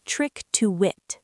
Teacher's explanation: The K sound at the end of trick pushes directly into the T of to. And the T connects to the it with a tiny little W sound hidden in the middle.